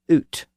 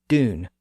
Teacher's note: all of those words were traditionally pronounced with a pure U sound, represented with the letter U.